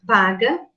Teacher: o som p é emitido com obstrução Total nos lábios